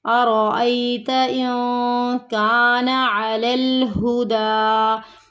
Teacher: اخفا کا قاعدہ ہو رہا ہے، نون ساکن کے بعد اگلا حرف حروف اخفا میں سے ہے، تو یہاں پہ ہمیں نون کی آواز کو چھپانا ہے